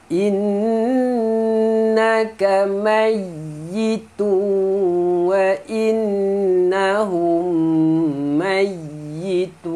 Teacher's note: Inna wajibul gunna kamayyitu, tanwin bertemu waw, masukkan tanwin ke dalam waw, dengung. Innahum, nun musyaddadah, mim mati bertemu mim, dengung lagi